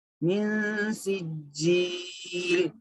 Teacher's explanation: نون کی آواز کو ناک میں چھپا کے پڑھنا ہے. ناک میں ایک الف کے برابر چھپانا ہے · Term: اخفا